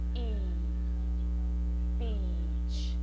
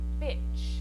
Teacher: If you mispronounce this long vowel sound and use the short I sound, you'll say bitch.